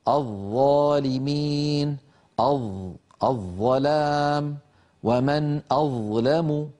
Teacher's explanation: راس اللسان او منتهى طرف اللسان قد توضع على اطراف الثنايا العليا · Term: الظاء